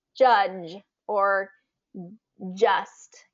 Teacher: G has the j sound to it. So the j sound is in the front of the mouth, right behind our teeth, and it's like in the words judge or just.